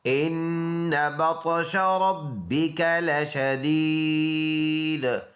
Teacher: ان میں غنہ کریں گے ایک الف کے اندازے سے بطش بقا زبر بقا قلقلہ کریں گے.